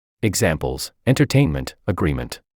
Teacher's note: have their stress on the second to the last syllable